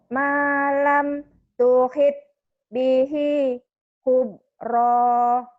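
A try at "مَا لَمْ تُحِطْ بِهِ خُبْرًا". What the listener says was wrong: Ibu mah giliran yang ada nya nggak dikeluarin. Ini kan huruf qalqalah Bu. tuhito bihi khubro. Ini harus ada e-nya.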